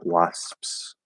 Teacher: you're just moving towards what would be a p but you're not completely closing it you're not actually doing a full p sound